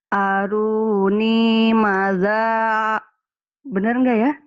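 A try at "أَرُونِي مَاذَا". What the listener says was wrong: Makanya salah, pendek. Harusnya panjang. Maknya panjang. Maknya panjang. Iya kan ada alifnya nih. matobi itu ini doma dengan waw mati panjang.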